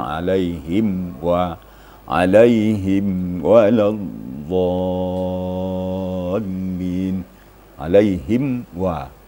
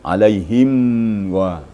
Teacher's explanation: hanya sekedar menampakkan mim mati saja mim sukun saja tidak ada embel-embel ditahan suara seperti alaihim wa alaihim wadin alaihim wa jangan alaihim gu itu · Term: izhar syafawi